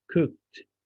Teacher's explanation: no vibration cook so the pronunciation of the ed is going to be t